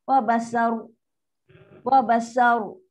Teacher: Ni waw nipis, ba nipis, sin nipis.